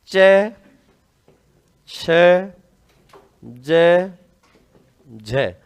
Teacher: जो जीवा होती है पहले नीचे फिर ऊपर जाती है तालू की ओर पहले नीचे फिर ऊपर जाएगी तो समय ज्यादा लगेगा नहीं लगेगा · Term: स्पर्श संघर्षी